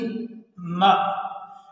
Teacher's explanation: جب ہم پہلا حرف ادا کرتے ہیں تو ہونٹوں کا اندرونی اور بیرونی حصہ ملتا ہے تو پہلا حرف ادا ہوتا ہے، یعنی م۔